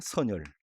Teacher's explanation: 이것은 이렇게 연음을 시켜서 발음하고 말더라고요. 이 첨가된 니은이 아니라 앞에 받침 니은이 뒤로 넘어왔을 뿐이에요